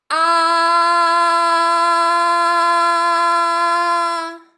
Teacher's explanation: And while I did that, I used my vocal folds to vibrate that sound, and I felt that vibration. I also heard it, and you heard it as well.